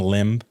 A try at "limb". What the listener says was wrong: The B's silent, dog. It's limb. You said limb. No, literally the B is silent. Limb.